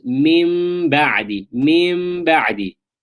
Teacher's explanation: you're changing the noon sakin or tanween into a meme. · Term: iqlab